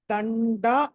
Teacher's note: డ అన్నది ట వర్గానికి చెందింది ట ట డ డ ణ కాబట్టి ఆ అనుస్వారం స్థానంలో ణ రావాలి